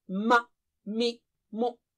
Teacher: Similarly, other harakat on the letter also show the makhraj, such as ma, mi, mu. So in all these cases, the lips are the makhraj of the letter meem.